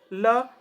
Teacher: ल वत्स्य वर्ण और पार्श्विक वर्ण कहे जाते हैं